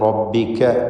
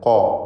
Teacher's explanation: കാഫ് ഇസ്തിഫാലിൻ്റെ തർക്കീഖ് ചെയ്യേണ്ട അക്ഷരമാണെങ്കിൽ ഖാഫ് ഇസ്തിഅലാഇൻ്റെ തഫ്ഖീം ചെയ്യേണ്ട ഹർഫാണ്.